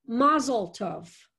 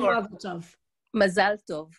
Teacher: emphasis shifts from the first syllable to the second syllable